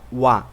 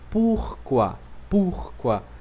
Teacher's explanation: Você diria oi, né, em português, mas você na realidade fala wa.